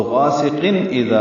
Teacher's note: ہے، تو غاسقین اذا میں حمزہ جلدی سے پڑھیں گے، اور ذال کے ساتھ الف ہے، 2 حرکات لمبا کریں گے، ذال کو نرم پڑھیں گے